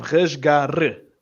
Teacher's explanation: So we want to start off the word with a bit of a r, like back of the throat, guttural type of R. Then at the end, we have a r, a rolled R, completely different.